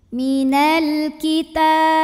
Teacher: Ta mad tabi'i muqaddar karena ada baris fathah tegak di atas huruf ta. Cara membacanya dipanjangkan taknya 2 harokat.